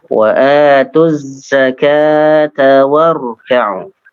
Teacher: ketika zakat warka'u itu di situ dari huruf ta ke wawunya agak cepat